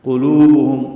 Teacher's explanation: قاف پر ہے، موٹا پڑھیں گے. لو واو مدہ ہے، دو حرکات لمبا ہے